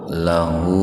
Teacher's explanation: huruf ha didahului huruf hidup, huruf lamnya kan hidup di fathah, maka hu-nya dibaca panjang seperti mad tabi'i dua ketukan tuh, disebutnya mad silah qasirah.